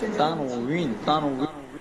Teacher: ওয়াওটাকে অনেক সময় আমরা ভ দিয়ে উচ্চারণ অনেক সময় করি